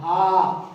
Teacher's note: हा कंठ से बोला जाता ना, हा कंठ है, इसलिए इसे काकल्य भी कहते हैं, ऊष्म संघर्षी भी कहते हैं।